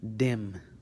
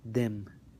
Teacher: the D is characterized by meeting of the tongue with the top of your mouth, but the dal sound is not. It's either behind your teeth, the tongue remains behind your teeth, and you say dal, or sometimes the tongue can come out, that I've seen that work too, dal, a little bit, and say dal.